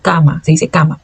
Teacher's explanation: a gente não vai falar com o som nasalizado do português, porque não existe este som nasalizado na língua espanhola